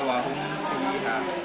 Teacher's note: Dan ada juga idhar syafawi. Mim mati ini dibaca jelas, boleh dibaca jelas.